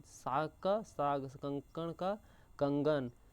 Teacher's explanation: जब अघोष ध्वनियां घोष ध्वनियां में परिवर्तित हो जाती है उसे घोषीकरण कहा जाता है।